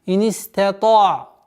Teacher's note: Если после твердого звука та уходить на мягкий звук айн с сукуном, нельзя твердо произносить айн.